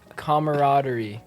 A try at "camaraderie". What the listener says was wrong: Camaraderie. Isn't that, you put an extra syllable in there. Camaraderie.